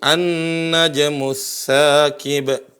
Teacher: Jadi ada lam tapi tidak terbunyikan. Enggak bilang al-najmu tapi langsung huruf nun. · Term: melebur lamnya